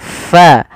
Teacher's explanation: ada angin yang dikeluarkan karena fa salah satu sifatnya sifat hames, yaitu mengalirnya nafas kita.